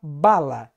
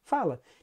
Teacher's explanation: Veja, na palavra bala, se eu trocar o fonema bilabial ba pelo fonema lábio-dental fá, fica fala